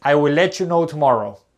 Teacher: Algunos pronuncian la T en let.